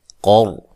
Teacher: قر قاف کو موٹا ادا کریں گے، را ساکن سے پہلے زبر ہو تو را کو بھی موٹا پڑھتے ہیں